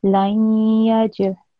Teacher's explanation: So, and the rule is that if there is a ya mushaddad, if that appears after a nun sakin or a tanween, but in this case there is a nun sakin, then when you join this nun sakin with this ya mushaddad, a nasal sound for 2 seconds will be produced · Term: idgham naqis